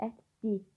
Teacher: l samiti d samitinə keçir